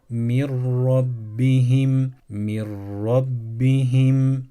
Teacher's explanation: harfini şeddeleyeceğiz bu deli hudil harfine sakin nun misali verelim Evet sakin nundan sonra ra harfi geldiğinde buradaki sakin Nunu okumuyoruz ra harfini şeddeliyoruz